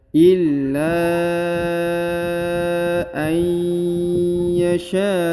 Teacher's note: Perhatikan ya, huruf na sukun atau nun sukun bertemu dengan ya, ditekan, ditahan 2 harokat, masuk dengan dengung, huruf nunnya melebur ke huruf ya.